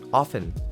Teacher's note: often Kebanyakan orang mungkin bacanya tuh often pakai huruf t tapi ternyata t-nya itu tidak perlu dibacakan teman-teman